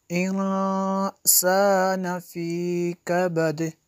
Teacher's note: ख़लक़नल इंसान फ़ी कबद। यहाँ पे देखें नून साकिन के बाद सीन और इख्फ़ा में से है, यहाँ पे इख्फ़ा होगा।